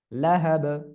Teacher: নারং, তারপরে দেখেন, জাল আলিফ জবর যা, এক আলিফ টান, তা জবর তা, যাতা, লাম জবর লা, হা জবর হা, লাহা, বা দুই সের বিন, লাহা বিন, অক্ফ করলে বা সাকিন, তখন কলকলা হবে